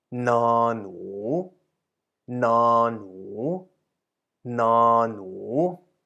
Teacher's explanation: Now, นอหนู as you can see, belongs to the low class consonant group determined by the blue background color of the นอหนู card. And the consonant นอ is a middle tone consonant itself, and the marker word หนู which means mouse, is a rising tone